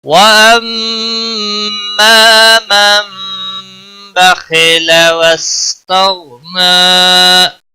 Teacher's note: خا کو بھی یہاں پر موٹا پڑا جائے گا کیونکہ حروف مستعلیہ میں سے ہے